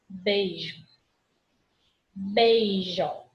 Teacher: O I fica bem apagadinho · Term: semivogal